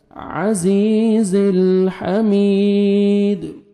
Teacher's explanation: دال ساکن قلقلہ کریں گے، ڈبل ساؤنڈ آئے گا